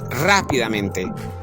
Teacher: Lleva la fuerza de voz en ra. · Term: sobre esdrújula